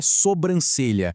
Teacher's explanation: O correto é sobrancelha, sem nenhum som nasal no início. O incorreto é sombrancelha.